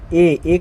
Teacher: ए तो कंठालव्य यानी कि कंठतालव्य से है यानी कि कंठ से ए का आवाज आ रहा है